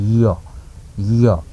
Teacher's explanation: त्यसै गरी तालव्य भनेको तालुबाट उच्चारण हुने य जिब्रोको बिच अथवा झन्डै झन्डै फेद भागबाट चाहिँ माथि कोप्रो परेको भागमा छोएर उच्चारण हुन्छ य।